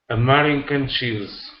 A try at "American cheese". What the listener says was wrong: Oh, almost. Watch the R. You don't want to say It's American. American cheese. So a trouble spot for you is the R between 2 vowels. The R between 2 vowels. That's a tricky one.